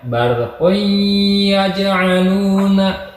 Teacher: Si tanwinnya tidak dijelaskan, tapi didengungkan gitu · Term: idgham bigunnah